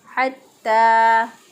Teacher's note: हरूफ हलक़ी का मखरज जो है वो वस्ते हलक है। ता खड़ी ज़बर ता, एक अलिफ के बराबर इसको लंबा करेंगे।